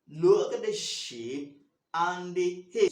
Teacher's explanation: look is stress, shape is stress, and head is stress